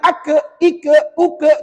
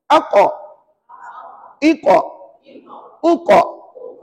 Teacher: pangkal lidah ditekan hampir ke anak tekak · Dia mesti guna pangkal lidah. Kemudian huruf ini mesti bersifat tebal. Maknanya tuan-tuan tak boleh baca aka, ika, uka, tak boleh. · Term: huruf qaf, makhraj huruf qaf